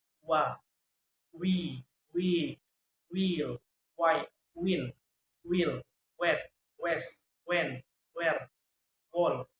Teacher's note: Voice labio-velar approximant sound wa, we, wheel